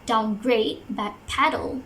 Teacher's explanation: the stress will be on the final syllable